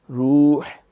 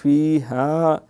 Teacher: ملائکۃ، ای کا تو نہیں پڑھیں، ملائی، اے نہیں ای، ملائکۃ والروح، روح، ہا جو ہے حلق سے، روح فیہا، پہلا ہا حلق سے ہے، دوسرا ہا پیٹ سے ہے